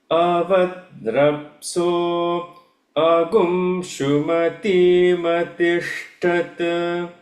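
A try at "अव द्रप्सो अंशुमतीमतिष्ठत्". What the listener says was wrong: Tishtha. You are saying tishta.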